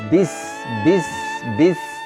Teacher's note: karena ketika mengucapkan huruf ba Ini bibirnya rapat